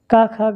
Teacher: का खा गा इस सबका होता है कंठ